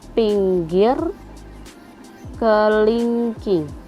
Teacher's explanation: vokal I tinggi bawah depan